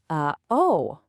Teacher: Uh oh, that gap in the middle, that's the gluttle stop. It's basically the sound of silence made on purpose right in your throat.